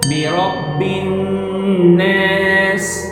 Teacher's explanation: But notice the word An-Nas. There is a shadda, a small W shape above the noon. You can't just pass by it quickly. You must hold it. Let the sound resonate in your nose. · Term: Ghunna